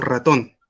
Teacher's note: Y las vibrantes, aquí las que tenemos las vibrantes simples, como la R, cuando va al medio de una palabra, y la vibrante múltiple cuando va al principio, como ratón